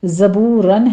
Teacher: زائی کی آواز سیٹی کے ادا کرتے ہوئے آگے واو مدہ ادا کریں گے، آخر پر وقفے ابدال کر لیں گے، 2 کاؤنٹ کر لینا ہے، فتحتین ہے۔